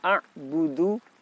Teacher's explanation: Pada 2 lafaz ini kita dapati huruf ain berharokat sukun. Kita ingat ain makhrajnya ada di tenggorokan bagian tengah, diucapkan dengan nafas tertahan